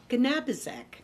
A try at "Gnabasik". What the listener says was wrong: No, you did not, but that's okay. Gnabasik. The G is silent. It's Polish.